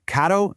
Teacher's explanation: A single R is a really quick, soft flap of your tongue against the roof of your mouth. It sounds almost like the D sound in the word ladder.